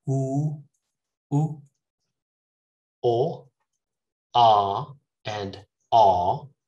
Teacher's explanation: That means the tongue is pushed forward a little bit to the front of my mouth. But when you say oo, oo, o, ah, and ah, these are back vowels.